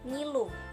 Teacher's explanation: Yang ke-22, bunyi N. Ciri-cirinya hidup, nasal, velar.